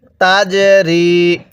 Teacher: জিমটা ধাক্কা দিয়ে পড়ব, কারণ জিমটা কলকলার হরফ।